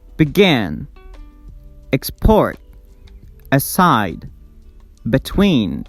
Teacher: We stress the second syllable in these words